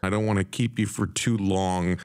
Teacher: is a typical reduction contraction in both formal and informal conversations the p in keep is linked to you resulting in Pew